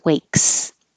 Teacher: the voiceless K makes the S sound like a voiceless s